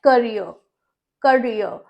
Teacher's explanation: उसके एंड में जो R है, पहला तरीका है कि वो साइलेंट रहेगा